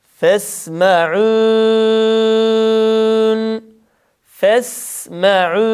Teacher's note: Sin harfinde, ha harfinde ve şin harfi sakin olduklarında bu harflerin sesi akıyor idi. Burada sin harfinin sesini akıtarak ayeti kerimeyi bitirmiş oluyoruz.